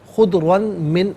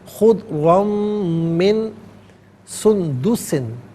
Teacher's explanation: ثِيَابًا خُضْرًا، را پر دو زبر کی تنوین، اسے من کی میم کے ساتھ ملائیں گے، میم کی آواز کو غننے کے ساتھ ادا کیا جائے گا۔ یہاں یرملون کا جو قاعدہ ہے وہ اپلائی ہوگا۔